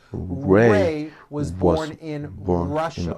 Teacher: notice how my lips come forward on all my R's and W's